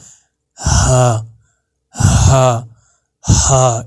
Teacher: یہ آپ کے بالکل حلق کے نیچے والے حصے سے ادا ہوگا، یعنی کہ آپ کے چھاتی والا جو حصہ ہے نا، چیسٹ والا حصہ، وہاں سے ادا ہوگا آپ کو. جب آپ اس کو ادا کرو گے آپ کو محسوس بھی ہوگا ہا ہا ہا ایسے کر کے. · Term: بڑا ہا